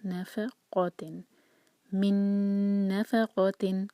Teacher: next ہوگا من نفقۃ، again میم پر شدہ کو اگنور کریں گے، پہلا جو شدہ ہے میم کو نون سے جوڑیں گے، نون کو ہولڈ کریں گے، من نفقۃ، نف لائٹ لیٹرز ہیں، آگے قاف جو ہے وہ ہیوی ہے، اس کو ہیوی پڑھنا ہوگا